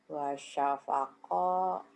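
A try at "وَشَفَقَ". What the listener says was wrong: gak ada yang panjang.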